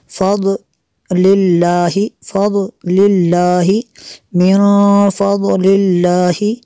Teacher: نون ساکن کے بعد فا ہے حروف اخفا میں سے، یہاں پہ اخفا ہوگا اس لیے یہاں پہ بھی غنہ کریں گے۔